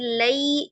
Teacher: ya sukunnya itu diucapkan dengan tidak miring, tidak imalah